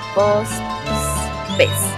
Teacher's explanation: Relajamiento de la vibrante múltiple, pronunciación diversa de pues, rara vez se pronuncia la U